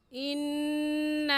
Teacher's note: इन्ना में नून मुशद्दद है और नून मुशद्दद पर हमेशा गुन्ना होता है, इसलिए गुन्ना करके पढ़ेंगे। और गुन्ना एक अलिफ की मिक़दार नाक में आवाज़ छुपाने को गुन्ना कहते हैं।